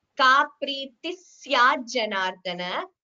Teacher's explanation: The visarga gets replaced by a s kara. So, you get two s's there.